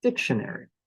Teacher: like shun and it's higher in Pitch dictionary it's like my my word starts on a high pitch and kind of goes downhill after that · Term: word stress